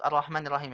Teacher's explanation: ini juga ada sukun nih Bu di Rahman Rah harus dihembuskan juga nafasnya